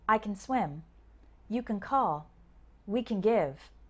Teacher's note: a strong-ass sound instead we say something like kin or kun the word gets shortened because the stress is usually on the main verb that comes after the word can